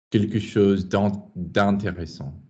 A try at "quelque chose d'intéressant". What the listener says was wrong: Well, privately, but don't bang a vowel to get it out. You don't need to. Stay smooth. Quelque chose d'intéressant. Don't think of vowels as binaries.